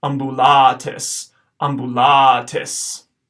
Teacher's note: The second word here, starting with A-M-B, the first A is short, and then towards the end of the word we get a long A